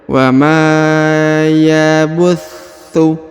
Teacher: Kemudian wa ma, huruf ma dipanjangkan 2 harokat ya. Wa ma, karena di depannya terdapat alif ya.